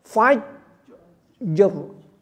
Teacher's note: kemudian r-nya volumenya dikecilkan dari vokal sebelumnya